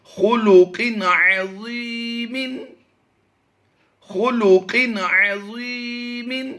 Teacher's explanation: یہاں پر دیکھیے تنوین ہے دو زیر والی، دو زیر کی تنوین کے بعد عین حروف حلقی سے ہے تو یہاں پر اظہار کر کے پڑھیں گے، غنہ نہیں کریں گے۔